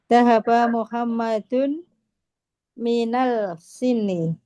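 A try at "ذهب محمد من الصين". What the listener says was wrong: Sod termasuk huruf syamsiyah. Berarti alnya tidak terbaca. Nah, minas ini. Nah, Zahaba Muhammadun minas Sini ilal Yabani.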